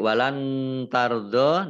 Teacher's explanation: nun sukun bertemu dengan huruf ta, bacaan ikhfa dibaca samar-samar.